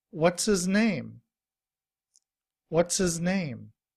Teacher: in reduced form, we don't pronounce the H. We just say is.